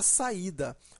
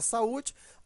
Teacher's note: a palavra compreendo observa que eu tenho aqui ó vogal vogal são duas vogais juntas porém em sílabas separadas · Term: iato